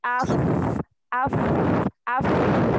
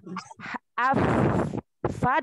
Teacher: huruf fa, jangan lupa ada sifat hamasnya. Af fa dialirkan nafasnya.